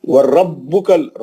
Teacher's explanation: را موٹا پڑھیں گے، با پہ سختی